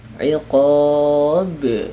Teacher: diwakafkannya huruf ba ini setelah mad, maka itu memantulkan sangat, ya, lebih besar pantulannya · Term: qalqalah kubra